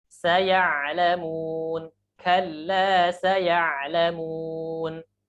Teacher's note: Kesalahan dalam pengucapan huruf ain adalah yang pertama ain seperti hamzah.